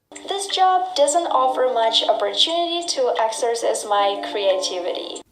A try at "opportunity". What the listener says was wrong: That's right, we don't pronounce it opportunity. The TU is not pronounced with the ch sound. It's pronounced with a T sound. Opportunity. There are a lot of examples where TU makes the sound ch. Examples, adventure, furniture, nature, and natural. We pronounce the TU with the ch sound, like chicken, when there's no stress after the T.